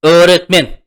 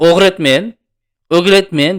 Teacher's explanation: Yumshoq g'ni tushirib olamiz. Talaffuz qilmaymiz. Nimaga? Chunki undosh bilan kelyapti.